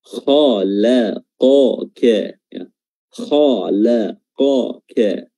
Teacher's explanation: Pertama kha dia tebal, lam tipis, qaf tebal, kaf tipis. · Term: tebal tipis